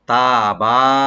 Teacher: তা ওপেন রাখবেন, এক আলিফ টানবেন, বা ওপেন করে এক আলিফ টানবেন। এটা অবশ্যই এক আলিফ করে টানতে হবে, খেয়াল রাখবেন।